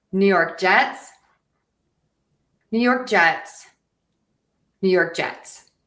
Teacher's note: So, we're going to stress York and Jets.